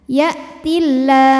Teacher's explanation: Mad tabi'inya adalah fathah panjang pada huruf lam, kemudian huruf yang disukunkannya adalah huruf ha. Maka lam dipanjangkan boleh 2, boleh 4 atau 6 harokat asal konsisten dalam sekali bacaan. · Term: mad arid li sukun